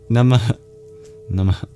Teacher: we end with a visarga, the expulsion of breath, the H with a dot under it, the mini exhale